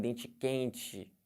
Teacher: O carioca já vem dente quente, né? Com esse chiado típico.